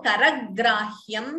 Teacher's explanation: Again, if you notice, there is a dvitvam. G is doubling.